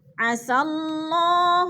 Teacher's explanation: حمید، حمی پہ یا ساکن سے پہلے میم کے نیچے زیر ہے تو یا مدہ ہو رہا ہے۔ عسى اللہ، اللہ سے پہلے لفظ کے اوپر زبر ہے تو اللہ کو پر کر کے پڑھیں گے